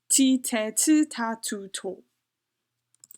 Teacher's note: So you can hear when I say it, like my breath comes out of my mouth. It's very aspirated. That's like basically you're saying with the D sound, except you're like breathing out your mouth.